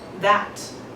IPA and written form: ðæt (that)